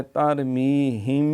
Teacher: اخفاء شفوی ہوگا، ترمیہم گنہ بھی ہوگا، دیر لگے گی